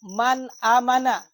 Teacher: Maka yang na harkat hamzah. Nun mate berjumpa dengan hamzah, maka bacaannya adalah izhar.